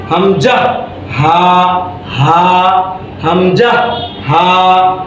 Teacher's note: এই হলকের শুরু হইতে হামজা, হামজা, আমার সাথে বলেন